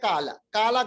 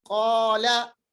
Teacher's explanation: دیکھیں ہم اکثر غلطی پڑھتے ہیں, ہم پڑھتے ہیں کالا, کالا غلط ہے, یہ ہے قالا. اب دیکھیں زبان کا آخری حصہ اوپر کے ساتھ ملائیے, ہونٹوں کو گول کیجئے, آواز موٹی نکلے گی. قالا, قاف کے نیچے زیر, قاف مکسور بنائیں گے.